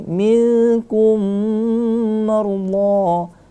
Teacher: mim mati bertemu dengan mim idgham mimi, maka boleh didengungkan di situ ya. Marullah, itu kita panjangkan 2 harokat karena mat tabi'i ya.